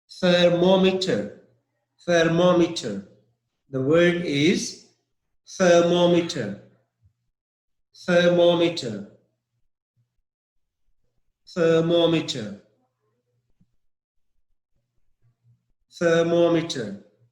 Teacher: I didn't put stress on ther.